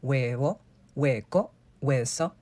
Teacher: Imagine it's not even there, like it doesn't exist. There's no H sound. Not soft, not strong, not even a whisper. It's simply not there, totally silent. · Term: H is completely silent